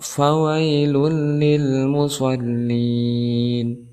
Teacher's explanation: huruf fa, di mana dia termasuk salah satu huruf hamas, maka ada angin ataupun nafas yang keluar. Setelah fa kita bertemu dengan wai, ya yang disukunkan sebelumnya berharokat fathah, maka kita hukumi sebagai ya huruf lain.